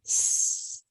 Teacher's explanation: this p and this T are voiceless same with the S there's only air voiceless no voice